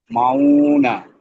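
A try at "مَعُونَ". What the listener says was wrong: মাউ, উতে তো টান হচ্ছে না, যেখানে টান নেই সেখানে টান হচ্ছে।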